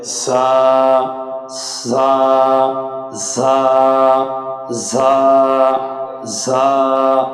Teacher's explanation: জিহ্বার আগা সামনের নিচের দুই দাঁতের আগার দিকে লাগিয়ে একালিপ টেনে পড়তে হবে